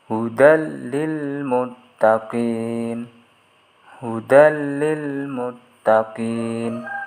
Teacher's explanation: Idgham bila gunnah yaitu memasukkan atau meleburkan nun mati atau tanwin tanpa disertai dengan mendengung, yaitu jika bertemu dengan huruf ra dan lam